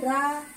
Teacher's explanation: रा को पढ़ते वक्त जीवा मुड़ जाती है पीछे की तरफ। पढ़ के देखिए रा, तो पीछे की तरफ से मुड़ जाती है जीवा। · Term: लुंठित व्यंजन